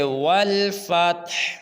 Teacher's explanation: آخر میں دیکھیں تو ہا ہے، ہم جب وقف کریں گے تو وقف میں ہا کو خوب ظاہر کریں گے